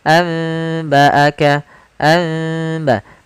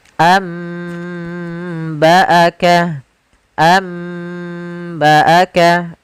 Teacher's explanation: ba'du sambil ditahan dengan ghunahnya, yaitu suara nunnya dirubah menjadi suara huruf mim. Jadi, iqlab itu merubah huruf suara huruf nun menjadi suara huruf mim.